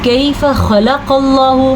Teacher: खा को भी पुर पढ़ेंगे और खाफ को भी पुर पढ़ेंगे और अल्लाह के नाम को तो पुर पढ़ेंगे ही, ठीक है। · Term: हरूफ मुस्तालिया